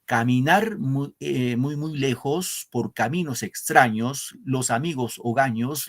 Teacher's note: al inicio de cada verso en la tercera sílaba el acento · en las últimas palabras en la penúltima sílaba va el acento fíjense lejos en la ley extraños en la tra o daños